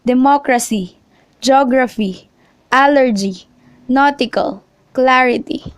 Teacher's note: in IC and shown here are some example iconic hypertension nutrition stress on the third from end syllable